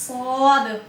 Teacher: सौद में मुस्तालिया की सिफत है, मोटा करके पढ़ेंगे